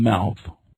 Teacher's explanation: is a nasal labial sound as in the M sound in mouth it is produced with the mouth closed